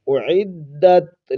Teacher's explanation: تا کو آپ نے ہلانا نہیں ہے کیونکہ یہ حروف قلقلہ میں سے نہیں ہے۔